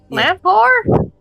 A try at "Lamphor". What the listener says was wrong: But the PH is like F.